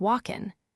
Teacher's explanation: many speakers drop the hard g at the end of words like walking, making it sound more like walking.